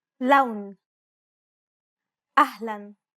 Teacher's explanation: Unlike the English L, the tongue is ever so slightly flatter and straighter in Arabic. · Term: Arabic L sound